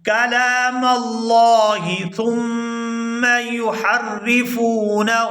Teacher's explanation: کلام اللہ ثم یحرفونہ، یہاں سا کو نرمی کے ساتھ ادا کرتے ہوئے میم مشدد کے ساتھ ملائیں گے اور غنہ کریں گے